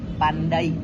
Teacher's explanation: Contohnya dalam bahasa Indonesia, kata pandai mengandung diftong ai. Saat diucapkan, bunyi berpindah dari vokal A ke I. Jadi diucapkannya seperti pandai.